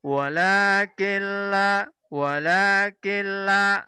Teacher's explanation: dileburkan dengan lam tetapi tanpa didengungkan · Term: melebur tanpa mendengung